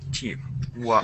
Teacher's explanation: even though it's spelled walked with a D at the end, so walked with the D, you want to say the D as if it were a T